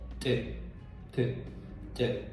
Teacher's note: it's not like English t but it's ejective sound